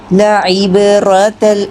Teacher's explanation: لعبرۃ را موٹا کریں گے، با میں قلقلہ کریں گے